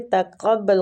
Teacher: قاف مستعلیہ حروف ہے، پور پڑیں گے